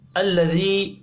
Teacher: یا مدہ ہے ایک الف کے برابر کھینچ کر پڑھیں گے